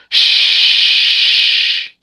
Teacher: Cuz for a letter to be able to release air is a [snorts] weakness in the letter sheen. And the letter sheen spreads from the middle of your tongue to the front of your mouth. Sh. Is it you or is something frozen?